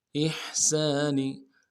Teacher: حا کو گہرائی سے ادا کریں گے، سین کی سیٹی باریک ہوگی ، سین کے ساتھ الف مدہ ہے، ایک الف مدار میں